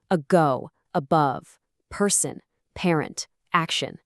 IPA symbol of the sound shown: ə